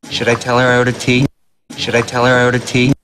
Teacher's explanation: Tea, and the pitch goes up. It's a yes, no question.